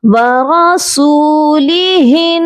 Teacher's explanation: یہاں پر ہم نے نون پر غنہ کرنا ہے، ہاں کو ہم جب نون مشدد کے ساتھ ملائیں گے تو غنہ کریں گے